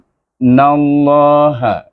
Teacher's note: Suku kata in iaitu hamzah dengan nun ini kita baca dengan wajib gunah dua harakat. · IS itu setulis idgham syamsi nun pada lam jalalah, dan lam jalalah juga dibaca tebal kerana nun baris di atas. Sebelum nama Allah, hurufnya baris di atas atau baris depan tak dibaca tebal.